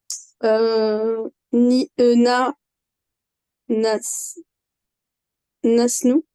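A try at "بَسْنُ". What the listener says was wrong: Alors, au début, c'est un bas.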